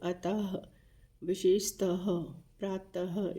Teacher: फिर विसर्ग होते हैं जिनके पीछे हम ह का इस्तेमाल करते हैं